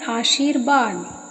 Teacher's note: उसी प्रकार आशी प्लस वाद, तो आशी यानी शा जो तालव्य शा है उसमें दीर्घ ई की मात्रा है और उसके बाद वा यानी अंतस्थ वर्ण आया है तो विसर्ग के स्थान पर हो जाता है रा, तो संधि युक्त शब्द बनता है आशीर्वाद।